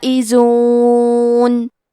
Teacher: کلمت الفائزون میں الف پہ مد کا علامہ ہے، یہ مد واجب متصل ہے تو ہم اپنی آواز 4 مد کے برابر لمبی کریں گے